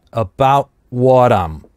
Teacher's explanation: about здесь /t/ замещается на гортанную смычку, потому что дальше /w/